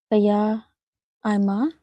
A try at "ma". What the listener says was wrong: That's not a ma. The ma is the other way around. I'll give you a hint that because it's a little off.